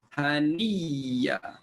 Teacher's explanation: Hamzah tukar jadi ya pertama masuk dalam ya kedua, bunyinya haniya. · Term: idgham